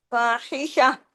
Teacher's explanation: تا گول تا جو ہے یہ ہاں میں بدل جائے گا اگر رکیں گے تو. ہاں سے، ہاں یہ گلے سے پڑا جاتا ہے نا، فاحشہ ایسے کر کے ہاں، یعنی اس تا کو ہاں بنا دیں گے اگر ہم یہاں رکیں گے، عارضی سکون کریں گے تو، ٹھیک ہے.